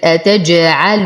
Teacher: نتم ضمة اللام مع الترقيق